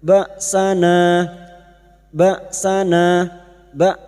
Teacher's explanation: Hamzah sukun sifatnya jahar dan siddah, tertahannya nafas dan tertahannya suara.